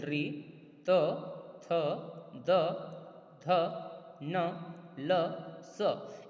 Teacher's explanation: ऋतु रसानाम दंताव जो वर्ण हैं, इन वर्णों को बोलने से या इन वर्णों को बोलते समय हमारी जिह्वा हमारे दांतों को स्पर्श करते हुए इन वर्णों का उच्चारण कर पाती है। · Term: दंतवर्णा